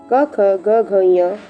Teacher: क, ख, ग, घ ञ कंठ से बोला जाता है।